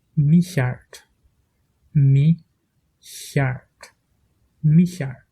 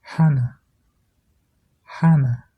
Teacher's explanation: le mot Michard est plus proche du I allemand et le mot Hannah, déjà, est plus proche du H anglais.